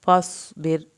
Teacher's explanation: रा पतला पड़ा जाएगा क्योंकि रा से पीछे वाले लफ्ज़ के नीचे ज़ेर है। जब भी रा साकिन हालत में होगा और पीछे ज़ेर होगी तो रा पतला पड़ा जाएगा।